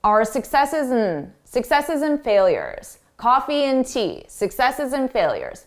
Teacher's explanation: Our successes and failures. Here, and, when and comes between 2 nouns or even 2 verbs, we reduce it to n.